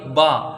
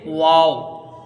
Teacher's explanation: یعنی دونوں ہونٹ مل جاتے ہیں با. اور واو جو آتا ہے اس میں ہونٹ ملتی نہیں بلکہ ہونٹوں کی گولائی سے ادا ہوتا ہے، جیسے واو ایسے کر کے اس کو ادا کیا جاتا ہے.